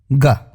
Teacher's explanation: जब आप ग का उच्चारण करते हैं तो आपकी जीभ का ऊपरी हिस्सा आपके तालु यानी पैलेट को बहुत ही हल्के से टच करता है, इसलिए ये कोमल तालव्य ध्वनि कहलाती है।